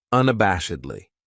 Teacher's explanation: This adverb has five syllables and the stress is on that third syllable that bash unabashedly. That second syllable has that schwa, that uh sound · That second syllable has that schwa, that sound, unabashedly.